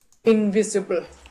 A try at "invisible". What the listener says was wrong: And not too much stress on the in, invisible. The stress invisible. Is on vis. Invisible.